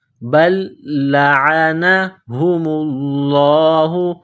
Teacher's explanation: بل لعنہم اللہ، میم کو لام کے ساتھ ملانا ہے، لفظ اللہ کے نام سے پہلے پیش ہے تو لفظ اللہ کے نام کو موٹا کرنا ہے